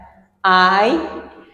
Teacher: So when they glide to the vowel e, we have I, which is when this vowel a glides to a front vowel, which is e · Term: closing diphthongs